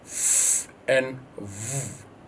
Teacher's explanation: The upper teeth touch your lower lip. That is why we have labiodental sound. Interdental is when the the upper teeth and the lower teeth come together, and your tongue will push forward to touch both those upper and lower teeth to produce that sound.